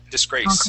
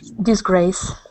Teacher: This word is disgrace. So the accent is at the end. Disgrace. Okay.